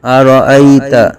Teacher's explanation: یا لین کا قاعدہ بغیر کھینچے، بغیر جھٹکا دیے پڑھیں گے